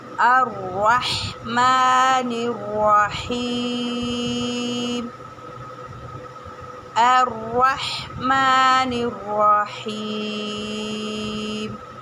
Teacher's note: رحمہ میں را کو ہم نے موٹا پڑھنا ہوگا اور ح کا مخرج نکالنا ہوگا, اور میم پر چھوٹی مد ہے تو اس کو بھی ہمیں کھینچ کے پڑھنا ہوگا.